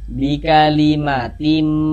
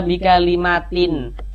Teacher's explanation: Nah, yakni ini bunyi tanwin ini dimasukkan ke huruf mim. Jadi bunyi tanwinnya dimasukkan ke huruf mim, melebur ke huruf mim. Nah, sehingga kita baca bi kalimatim. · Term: idgham bi gunnah